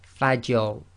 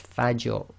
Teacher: the Fa is light, empty mouth, you must maintain that, and then you go into a heavy mouth on the Ra